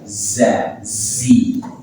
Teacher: Ada za berlekat pada dinding bagian dalam gigi seri bawah.